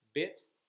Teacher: with bit, your tongue is just kind of in the middle, just above the bottom of your mouth, and kind of a straight line